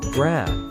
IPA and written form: ɡræb (Grab)